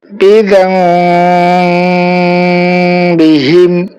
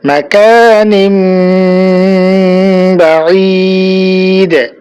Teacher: আমাদেরকে তানবিনের উচ্চারণকে মিম দ্বারা পরিবর্তন করে গুন্না সহ পড়তে হবে।